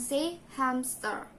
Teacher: in english many add a p to hamster and say hamster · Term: insertion